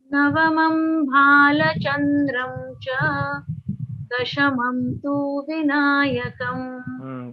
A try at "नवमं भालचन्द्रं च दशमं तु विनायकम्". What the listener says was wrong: The two is getting long, becoming longer.